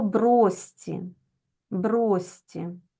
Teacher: ми записуємо пишемо ми брошці але вимовляємо бросці так тому що у нас шиплячий ш замінюються на свистячий